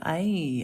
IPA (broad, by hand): eɪ